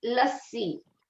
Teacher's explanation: you have to emphasize the sa because it's conjunct with the other si. So you cannot just say lassi or lassasi, but lassi.